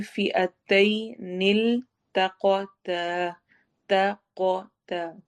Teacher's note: تا کا مخرج اور قاف کا مخرج اس کا فرق رکھنا ہے. تا کو باریک ادا کرنا ہے، قاف کو موٹا